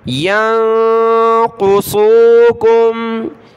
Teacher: یا کو نون ساکن کے ساتھ ملائیں گے، نون ساکن کلرفل ہے، ناک میں آواز پیدا کریں گے۔ قاف اور صاد دونوں کلرفل ہیں، ان کو موٹا پڑھنا ہے۔